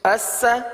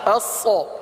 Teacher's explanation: سین اور صاد دو حرف ہیں، دونوں کا مخرج ایک ہی ہے لیکن سین باریک اور صاد پر ہے